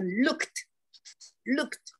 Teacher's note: 那个▁ed▁读成那个▁t▁的轻音